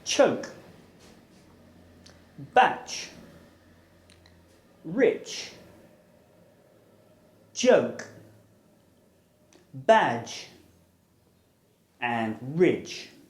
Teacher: The j is voiced and the ch is aspirated.